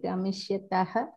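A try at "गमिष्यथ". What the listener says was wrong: No. Tha. Second one. Tha. Gamishyati, Gamishyataha, Gamishyatha.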